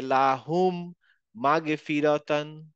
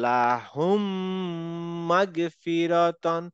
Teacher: নাকে তুলে গুন্নাতে একটু সাউন্ড নিলাম, 2 কাউন্ট টাইম নিলাম